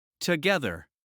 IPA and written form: təˈɡɛðər (Together)